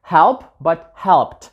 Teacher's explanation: the ending in ed form is going to also be voiceless, right? Like t.